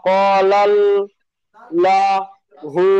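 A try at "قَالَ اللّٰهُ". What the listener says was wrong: ক টান এখানে টানবেন। ক আলিফ মাঝে আছে, আলিফের ডান দিকে যাবার আছে, কলাল ল। পুরো মুখটি গোল করবেন, কলাল্লাহু। লাল ল। ল। কলাল্লাহু।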